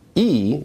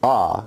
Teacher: E is an example of a high vowel, and Ah is an example of a low vowel.